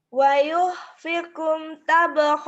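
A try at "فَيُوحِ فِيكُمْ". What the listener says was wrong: Fayuh fikum bukan wayuh. Fa.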